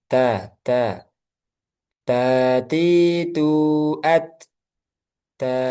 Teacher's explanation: ta dia keluarnya dari pangkal gigi si atas ee ujung lidah bertemu dengan pangkal gigi atas. Kemudian ini punya sifat hames. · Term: huruf ta